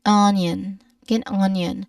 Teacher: Many native speakers, when they say onion, often include a subtle J and, you know, right after the end, so it's not simply onion.